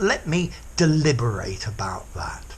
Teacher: And then to deliberate, you pronounce all of the word, and the ending is stressed.